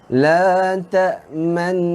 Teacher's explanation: First step kita dengung dulu. La ta'man. Dengung. Kemudian kita muncungkan bibir. La ta'manna. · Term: bacaan ismam